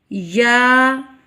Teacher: یا یہ مد اصلی ہے، اس کو 1 الف کی مقدار میں لمبا کیا جائے گا اور اس کا مخرج ہے زبان کا درمیان. جب اوپر کے تالو کے درمیان سے لگے تو یہ حروف ادا ہوگا.